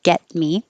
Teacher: I'm not going to say the T. It's going to hold it there.